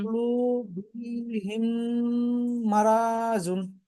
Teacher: মিম সাকিনের পরে মিম এসেছে, তাই মিমকে মিমের সাথে মিলিয়ে এক আলিফ পরিমাণ গুণনা করে পড়তে হবে। একে ইদগামের সাফাবি বলে।